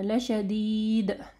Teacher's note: آیات کے آخر میں جو ہے دال کے اوپر کلکلا کرنا ہے